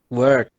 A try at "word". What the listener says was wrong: The last letter? The last letter, you have the last phoneme you haven't pronounced. Try again and pronounce the last phoneme.